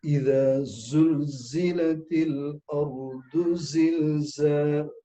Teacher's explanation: Ketika kita membaca surat Iza Zulzilatil Ardu Zilzalaha, kalau kita baca dengan makhraj yang betul, sifat huruf za yang betul, itu akan kita rasa getaran gitu